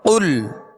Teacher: قاف لام پیش قل، قاف پر پڑھیں گے اس لیے کہ یہ حروف مستعلیہ میں سے ہے، اور لام کا جو سکون ہے، جزم ہے، اس میں جنبش پیدا نہ ہو